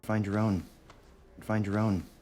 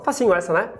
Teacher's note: find your own, você vai palatalizar o D